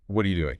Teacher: The emphasis slams onto the action, doing.